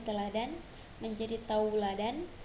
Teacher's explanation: Bunyi vokal tunggal e diubah menjadi vokal rangkap au. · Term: diftongisasi